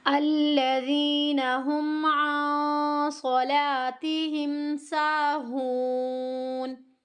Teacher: ساکن حرف ہمیشہ پیچھے والے حرف کے ساتھ ملا کر پڑھا جاتا ہے، اب ہمیں نون کو ہا کے ساتھ پڑھنا ہے۔ ہون، مد عارض ہوگی، وقف کے ٹائم 3 الف کی مقدار کے برابر